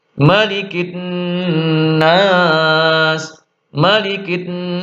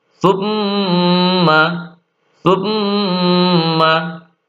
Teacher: ketika mim dan nun bertasydid dibaca dengung yang lama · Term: ghunah